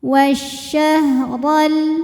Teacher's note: Huruf ra dibaca secara tafkhim karena ra berharokat fathah. Cara bacanya adalah ditebalkan.